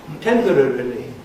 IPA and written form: ˋtempərərəli (temporarily)